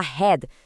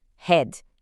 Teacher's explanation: sem colocar aquele I no final, é só o som do D, head, isso muda tudo, certo?